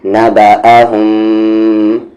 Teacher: میم ساکن کے بعد اگر آپ کو با نظر آئے تو آپ کو وہاں پر آواز کو ناک میں رکھنی ہے تھوڑی دیر، یعنی کہ غنہ کرنا ہے، نبأہم، اس طریقے سے۔